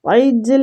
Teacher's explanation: تو کھینچیں گے، فی قلوبہم العجل لو کو کھینچیں گے، عجل عین حلق سے جیم کلکلا ہوگا